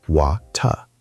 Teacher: In British English, the T is very clear, very sharp.